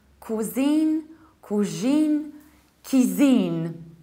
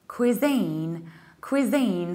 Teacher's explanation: you stress the second syllable and you have a long e